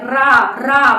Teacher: रा बोलने से ऐसा नहीं लगता बहुत कंपन सा हो रहा है गले में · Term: प्रकंपित